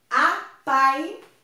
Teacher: ela é pronunciada com menos intensidade do que a vogal a que antecede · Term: semivogal